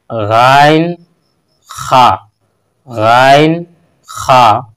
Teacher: চার নম্বর মাখরজ হলো গলার প্রথম ভাগ গলার একদম প্রথম যে অংশ এখান থেকে আদায় করা হয় গাইন খা